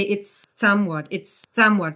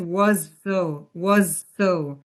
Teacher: So you just hold the consonant s and then link it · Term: consonant to consonant linking